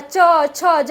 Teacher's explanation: हमारा जो जीभ है ऊपर तालु को टच करते हुए नीचे आता है। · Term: तालव्य या तालु वर्ण